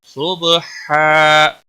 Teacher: تنوین کو بدل کر 1 زبر کے ساتھ مد بنے گا، مد کے ساتھ وقف ہوگا